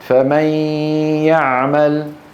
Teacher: عليك أن تنطق صوتين معا في آن واحد. الصوت الأول من الفم يا، والصوت الثاني من الأنف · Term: إدغام بغنة